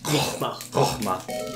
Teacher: There's quite a glottal H in there